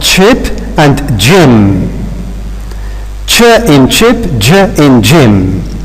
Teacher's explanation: is a stop followed by a fricative sound and they have again they have got more or less the same place of articulation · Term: affricate